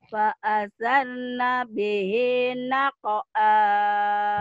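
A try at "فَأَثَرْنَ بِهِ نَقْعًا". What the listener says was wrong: Fa'azan. Nih, dilembutin ya. Jangan disentak-sentak. Fa'azan. Dilembutin sekarang. Fa'azan. Fa'asarna bihi. Fa'asarna bihi naq'a. Fa'asarna bihi naq'a.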